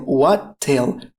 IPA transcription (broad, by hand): ˈwæt.teɪl